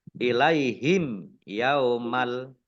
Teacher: mim sukun bertemu dengan huruf ya bacaan izhar syafawi dibaca jelas